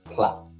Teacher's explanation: But in Geordie, plat. There's just a glottal stop, plat. And your glottis, which is the back of your tongue, covers your esophageal tract.